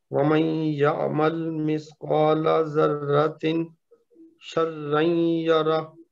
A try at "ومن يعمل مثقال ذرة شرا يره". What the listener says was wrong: ذرۃ شرا یرا، جہاں پہ اخفا ہے نا وہاں پہ آپ کو غنہ کرنا پڑے گا، تب وہ صحیح ادا ہوگا۔ ذرۃ اگر کہیں گے نا تو یہ تو اظہار ہو گیا، لیکن اس کے بعد چونکہ شین ہے نا تو ہم نے اخفا کرنا ہے۔